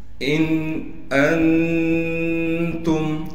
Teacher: حمزہ کو نون سے ملانا ہے بغیر غننے کے، غنہ بالکل نہیں کریں گے